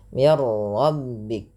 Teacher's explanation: Jangan banyak sekali takrir pada huruf ra, tapi sekali saja. · Dan di sini juga idgham kamil, nunnya hilang secara utuh karena langsung ke huruf ra, dan ra dibaca dengan tebal. Hati-hati dalam melafalkan ra, tidak dibaca dengan mir rabbik.